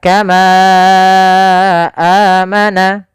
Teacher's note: Maka panjangnya ma harus kita panjangkan sepanjang 4 harokat. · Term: mad jaiz munfasil